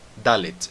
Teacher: A letra Dalet termina com um T, então nós terminamos com som de T sem colocar uma vogal.